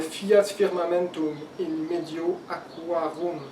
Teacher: Donc les R se prononcent le R espagnol, le R au bout de la langue.